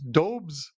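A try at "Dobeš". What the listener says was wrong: It's so he's actually he's Czech. It's Dobish. So yeah, with the sh sound at the end, Jakub Dobish.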